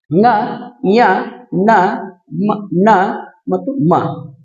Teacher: ಮೂಗಿನ ಸಹಾಯದಿಂದ ಉಚ್ಚರಿಸಲ್ಪಡುವಂತ ಅಕ್ಷರಗಳು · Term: ನಾಸಿಕ